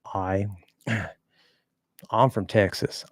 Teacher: Of course, they have that sort of Southern drawl where they kind of round out and draw out some of the vowels